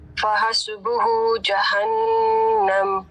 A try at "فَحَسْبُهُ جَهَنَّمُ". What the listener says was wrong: فحسبہ ایسے کریں گے تو اس میں جھٹکے آ رہے ہیں، جھٹکے نہیں دینے.